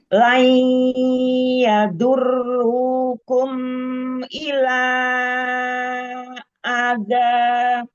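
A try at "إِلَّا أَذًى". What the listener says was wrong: Illa, lamnya ada tasydid. Illa ada. Illa, jangan dinabar lam ya. Illa ada.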